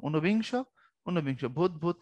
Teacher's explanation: বাংলা ভাষায় রস্য এবং দীর্ঘ উভয় বর্ণের উচ্চারণ অভিন্ন, একই রকম।